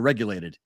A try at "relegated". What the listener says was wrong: Relegated. You said regulated. It's not the same difference. It's like annals and anals. It's one little sound off.